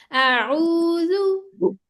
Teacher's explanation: जाल के ऊपर इसकी सीटी नहीं बजानी, सॉफ्टली है